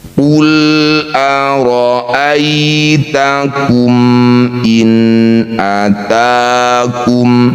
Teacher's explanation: Bunyi mim baca jelas, tidak usah dengung. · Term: izhar syafawi